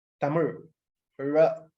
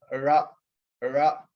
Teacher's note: You have to curl your tongue almost extreme to the back. For instance, the word Tamil itself, Tamil, ra, you have to curl your tongue, ra, ra. · The tip of the tongue, you have to curl it back against the part of the palate. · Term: retroflex